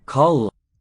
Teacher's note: Kald with a long L because it stands for 2 consonants.